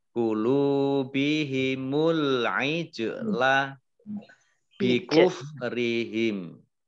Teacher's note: Kemudian kulu bihimul ijla, alif lamnya alif lam komariah ditandai dengan lamnya dibaca sukun. Kemudian jimnya jim sukun kolkolah dibaca memantul. Ya, kalau ada bacaan kolkolah, bacaan memantulnya ditampakkan ya.